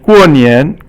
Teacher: 过 is fourth tone, and 年 is 轻 声 here, but 年 is usually 二 声.